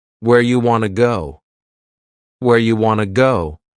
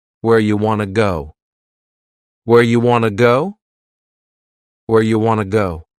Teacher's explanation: this is a similar reduction to our first question you becomes ya and want to becomes Wana